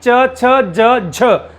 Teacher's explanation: स्पर्श तो करते हैं उसके साथ साथ ये संघर्ष भी करते हैं, तो इनमें स्पर्श संघर्षी कहा जाता है इन 4 को।